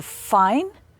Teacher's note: your top teeth touch your bottom lip with for fine you don't use your voice box it's an unvoiced sound